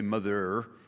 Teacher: A study carried out by the University of Lancaster has revealed that Blackburn is one of the last places left in England with a proper northern accent. They say a genuine northern accent involves the rhotic R, which is the hard pronunciation of the letter R at the end of a word